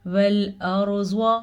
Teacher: خلق السماواتی، سین کو لمبا نہیں کرنا کیونکہ سین پہ زبر ہے، جبکہ میم اور واو دونوں پہ کھڑی زبر ہے تو ان کو ہم کھینچ کے پڑھیں گے. والارض، را ساکن سے پہلے زبر ہے تو یہ را پر پڑھی جائے گی